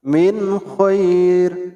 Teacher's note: Baik, sekarang yang ketiga yaitu kha dan ghin. Tempat keluarnya huruf kha dan ghin ini yaitu dari adnal halqi, ujung tenggorokan.